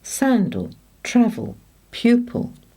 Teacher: Words of more than one syllable that end with these letters all have the ul sound, which is a schwa and the sound of the letter L